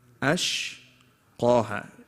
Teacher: Alif and sheen are light, qa is heavy, and ha is light.